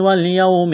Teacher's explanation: واو ساکن سے پہلے زبر ہے، حروف لین واو ہے تو یہاں پر اس کو جلدی پڑھیں گے، کھینچیں گے نہیں